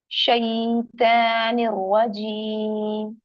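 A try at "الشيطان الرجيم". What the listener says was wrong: ता नहीं है, यहाँ पर तौ है। देखिए ता जो है लाइट लेटर है और तौ जो है वो हैवी है। तो शैतान में तौ आता है, कैसे लिखते हैं शैतान, शीन या तौ अलिफ नून। तो शैतो, तो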